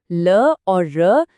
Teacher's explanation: ल और र दांतों के ठीक पीछे वाली जगह से बनती हैं,